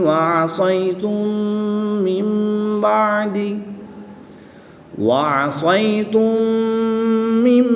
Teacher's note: میم ساکن کے بعد دوسری میم ہے تو یہاں پر ادغام شفوی ہوگی، یعنی میم ساکن میں غنہ کر کے پڑھیں گے